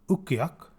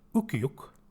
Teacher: Oke meaning winter this is a case of a minimal pair the only thing that differs between these two words is the final vowel ah for late fall and ooh for winter